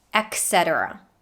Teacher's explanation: a lot of people say etc pronouncing a k sound instead of the t i guess because the first t in this word is a